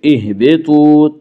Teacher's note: تو کو پر پڑھیں گے، تو حروف مستعلیہ میں سے ہے